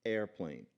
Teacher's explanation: because you don't pronounce airplane beginning with a vowel, you pronounce it beginning with a consonant, which is the glottal stop